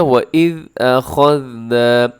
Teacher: أَخَذْنَا میں خا اپنے موٹا پڑھنا ہے اور آگے ذال کو باریک بھی پڑھنا ہے، اس میں سیٹی بھی نہ ہو۔ أَخَذْنَا، نا کو تھوڑا سا لمبا کیجیے گا، کیونکہ نا کو تھوڑا سا لمبا کیجیے گا کیونکہ اس کے الف ہے نون کے ساتھ، تو آپ نے اس کو لمبا کرنا ہے۔